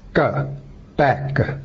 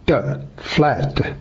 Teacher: final consonants K, T, and P, or ka, da, and ba, are pronounced without released sound